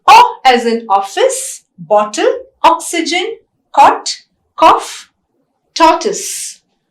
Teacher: Whereas O is a short vowel and it is also rounded. It's also a back vowel.